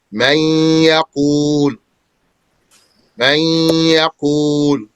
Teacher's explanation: This noon in this instance got inserted into or merged into or assimilated into the ya. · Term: ghunnah